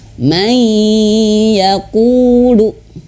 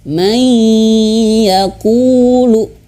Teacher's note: May ditahan, masuk hidung. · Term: dengung